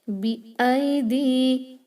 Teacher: I, only one haraka. Remember, you cannot stretch this ya leen. You have to stretch it only when it converts to mad al leen.